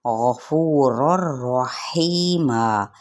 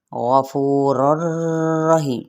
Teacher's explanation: غفور الرحیمہ غین بھی پر ہے، فو پہ واو مدہ اور یہ دونوں را بھی پر ہوں گے، یہاں پہ ادغام بغیر الغنہ کے، ٹھیک ہے، کیونکہ تنوین زبر کے بعد را یا لام آ جائے تو پھر غنہ نہیں کرنا